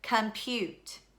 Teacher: our second syllable is our accented syllable